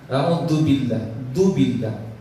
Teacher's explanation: Kenapa? Karena zalnya tidak keluar gigi, hanya di gusi, bahkan di belakang di atas.